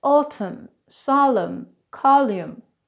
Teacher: the 'n' sound is almost always pronounced in English except when it comes after an M as in these words autumn solemn column So it's not autumn it's autumn it's not column its column.